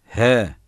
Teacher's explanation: boğazın sonunda göğüse bitişik olan yerden çıkarılır ince gizli ve yumuşak okunur